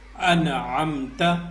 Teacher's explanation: میں سے ایک حرف ہے عین، تو یہاں پہ عین ہے، جب حروف حلقی میں سے کوئی حرف آ جائے تو وہاں پہ اخفا نہیں کرتے، ٹھیک ہے، اس کو واضح پڑھیں گے